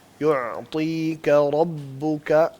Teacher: را کو پر کریں, لیکن اس کے اندر جو نیچرل تکرار والی صفت ہے اس کو گول نہ کریں